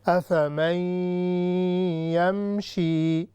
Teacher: ابھی میم یا میں چھپ رہی ہے، ایک دوسرے میں مل رہی ہیں، تو اسے ہم کہیں گے ادغام